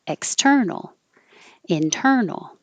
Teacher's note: the X and the in are not stressed and will be shorter and will go by quickly and probably harder to notice.